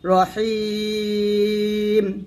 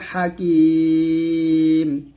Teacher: যেমন এখানে আছে র জবর র, হাইয়া জের হি, রহিম মিম 2 পেশ মিন রহিমুন আছে, যদি ওয়াকফ দেন তাহলে হেইতে আমরা 3 আলিফ টান দিয়ে মিমটা সাকিন করবো, রহিম। এরকম হা জবর হা, কাফ ইয়া জের কি, মিম 2 পেশ মানে হাকিমুন, থামলে হবে হাকিম।